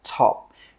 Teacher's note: with that final P sound, we stop the air from coming out and we just say top.